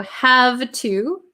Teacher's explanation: The V sound changes to an F. I have to. And then the oo.